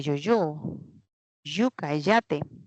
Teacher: Y cuando la lengua, ya el cuerpo de la lengua se aproxima a la parte alta, que es la zona palatal, ahí está pues una Y. Esto ven como una J, parece una J, ese es Y de yo-yo, yuca, yate.